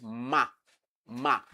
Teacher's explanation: the air is coming from the nose and the same thing with ma ma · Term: nasal sound